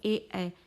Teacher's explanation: जीभ का बीच का भाग तालु में जुड़ रहा है, तो इसलिए कंठ व तालु से जुड़ते हुए निकल रहा है।